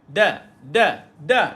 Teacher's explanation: maka Dal ini nipis maka kita kena senyumkan dia bila baca · dia adalah huruf yang isti'la sebab lidah terangkat. Tapi tuan-tuan, konsep dekat sini, dal ini huruf yang dia nipis.